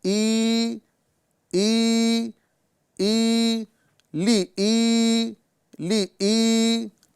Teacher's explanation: لی کو نہیں کھینچیں گے بلکہ ای کو کھینچیں گے، ٹھیک ہے۔ یہاں جو تلفظ ہم ادا کر رہے ہیں تو لام کو حرکت کے ساتھ پڑھیں گے، اس کو بغیر کھینچے ادا کریں گے۔ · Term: یا مدہ کو کھینچیں گے